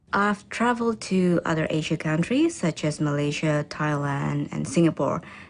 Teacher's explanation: notice how the countries are listed using a level tone that then falls for the last item in the list